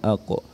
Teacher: Huruf qaf menyentuhkan pangkal lidah kita di langit-langit bagian belakang dan dengan menebalkan suara qa dengan memoncongkan bibir, dan saat disukun dibaca pantul, dan pantulannya itu terdengar bunyi oh aqo, bukan ake tapi aqo, karena dia adalah huruf yang dibaca tebal.